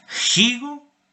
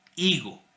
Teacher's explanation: Entonces, en la Edad Media había, por ejemplo, dos posibilidades de decir la palabra igo. Gigo con la aspiración con el elemento glotal o igo con el cero fonético